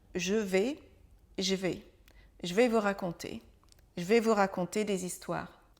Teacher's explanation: Le E, la lettre E, va tout simplement disparaître. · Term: contraction